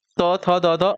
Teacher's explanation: त थ द द आपके दंत हो जाएगा